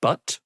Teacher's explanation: the much more common uh unrounded sort of unlipped uh sound uh as in a word like but